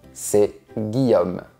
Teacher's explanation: Ça s'est transformé en ce. Et le E a disparu à cause de la rencontre des voyelles. Donc, on met un apostrophe.